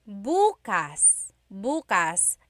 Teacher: emphasis is on the first syllable, that means tomorrow.